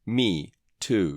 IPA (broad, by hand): iːuː